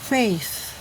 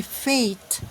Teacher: There is no T sound here, but a voiceless TH. Release the air between your upper teeth and your tongue.